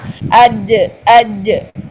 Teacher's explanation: جیم ایک سخت حرف ہے، جیم جو ہے یہ اس میں شدت پائی جاتی ہے، اس لیے زبان کا درمیان پورا اوپر تالو کے ساتھ ٹچ ہوگا، اج اج، ٹھیک ہے۔